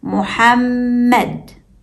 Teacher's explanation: even though we only see two written mem letters we hear three mem sounds because the shda doubles the second one